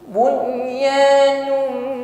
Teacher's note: tanwin bertemu mim idgham bunna sempurnakan bunyi dengungnya